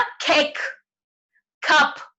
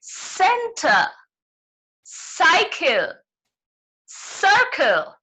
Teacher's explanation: एक आवाज होती है ख सी की और एक सी की आवाज होती है स. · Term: हार्ड सी